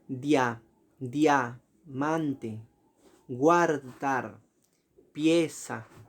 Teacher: por tener la vocal abierta al final decimos que es un diptongo creciente